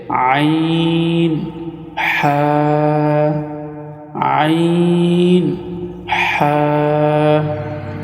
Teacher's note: হলকের মধ্যখান হইতে 2টি হরফ উচ্চারিত হয়, সেটি হচ্ছে আইন হা, আইন হা।